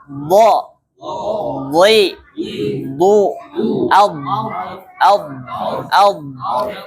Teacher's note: Jadi di samping lidah Pak, bukan ujung lidah ya, tapi samping lidah. Samping lidah bertemu dengan geraham gigi, geraham yang atas ya. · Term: huruf dhad